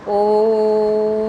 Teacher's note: ओ में ओ को देर तक बोला गया, दीर्घ से भी ज़्यादा समय हो गया, वो प्लुत स्वर हो गया।